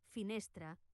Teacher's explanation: a la paraula finestra, la E i la A final han de sonar gairebé igual, molt suaus. Consell: no obris gaire la boca, deixa-la gairebé tancada i relaxada. · Les A i les E, que no tenen accent, sonen igual, com un so molt relaxat, la vocal neutra. Per exemple, a la paraula finestra, la E i la A final han de sonar gairebé igual, molt suaus.